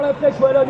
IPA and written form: la flɛʃ walɔn (La Flèche Wallonne)